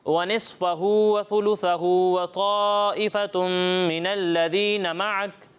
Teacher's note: تا میں سیٹی کی آواز نہیں آئے گی، ٹھیک ہے